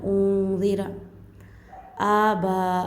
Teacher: उन्ज़िर आबा खड़ा ज़बर आकर है, अबा पढ़ दे लेंगे तो खड़ा ज़बर छुप जाएगा, तो खड़ा ज़बर आकर है एक अलिफ की मकदार खींच कर पढ़ेंगे